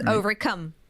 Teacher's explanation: if it's the single word overcome, the emphasis is on that last syllable, I would say.